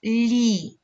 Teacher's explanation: перший звук ль - це М'який приголосний